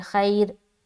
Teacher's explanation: खैर की जो रा है ना, उसको बारीक हम करेंगे · लेकिन अगर रा साकिन से पहले या साकिन आ जाए तो हर हाल में रा को हम बारीक करेंगे, चाहे उससे पहले पेश हो या उससे पहले जेर हो या ज़बर हो, हर हाल में रा बारीक होगी।